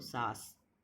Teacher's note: ये मौखिक स्वर हैं, क्योंकि इसमें हमारी हवा जो है वो सिर्फ मुंह से निकल रही है